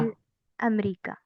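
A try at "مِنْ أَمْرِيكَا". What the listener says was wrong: अब देखिए, मिनल अमरीका नहीं होगा, यहाँ पे भी आपको मिन अमरीका।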